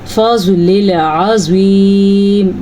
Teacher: زواد کو بھی پر پڑھنا ہے اور زوا کو بھی پر پڑھنا ہے کیونکہ یہ دونوں حروف مستعلیہ میں شامل ہیں